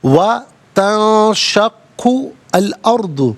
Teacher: تنشق میں نون ساکن اس کے بعد شین حرف اخفا ہے، تو نون ساکن کو اخفا کے ساتھ پڑھیں گے۔ اخفا کہتے ہیں ناک میں آواز لے جا کر گنگنانا۔